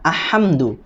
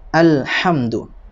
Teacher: Alnya dibaca jelas, tidak boleh dibaca ahamdu, tetapi harus alhamdu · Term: idhar qamariyah